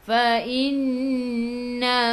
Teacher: nun ada sabdu, tekan ke dalam nun dan dengung 2 harakat wajibul gunnah. Fa innama, ma 2 harakat ada alif mat asli.